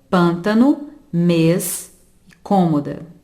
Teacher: O acento circunflexo indica o timbre fechado das vogais A, E e O.